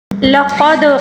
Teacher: وَهَذَا الْبَلَدِ الْأَمِينِ لَقَدْ خَلَقْنَا الْإِنسَانَ فِي أَحْسَنِ تَقْوِيمٍ، لقد قاف کو پر پڑھیں گے اور دال کے اوپر جو ساکن ہے اس کو کلکلے کے ساتھ پڑھیں گے